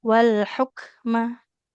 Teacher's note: Huruf kafnya pastikan aliran nafasnya.